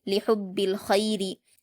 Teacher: را پر زیر کی حرکت ہے جلد پڑھیں گے اور باریک پڑھیں گے